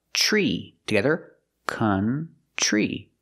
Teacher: the t r makes a chch sound like chicken plus the r